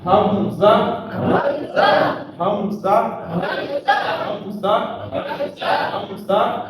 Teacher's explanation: ہمارے حلق کا وہ حصہ جو بالکل سینے کی طرف ہے، وہاں سے جو ہے وہ ادا کریں